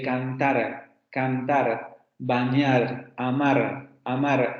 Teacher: el alveolar vibrante simple sonoro